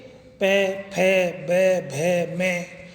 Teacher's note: ओठों को बंद करने पे ये ध्वनियाँ निकलती हैं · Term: ओष्ठे